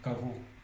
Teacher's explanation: le G qui est situé entre deux voyelles OO se lit V